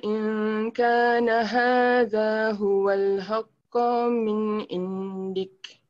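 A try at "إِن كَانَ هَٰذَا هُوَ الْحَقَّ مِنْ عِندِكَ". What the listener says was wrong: Min, your min ini macam ada dengung. Min indik. Jadi min dia tu macam you pause kejap lagi supaya dia tak bunyi dengung. Min indik.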